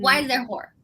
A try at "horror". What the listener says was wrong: It sounds like you're saying whore. Why is there horror? Horror. It sounded like you were just saying whore instead of like horror.